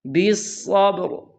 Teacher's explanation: با کو موٹا نہیں کرنا اور را کو باریک نہیں کرنا، را کو بھی پر پڑھنا ہے۔